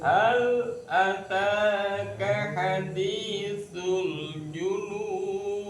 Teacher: hal lamnya disempurnakan, jangan sampai segera dilebas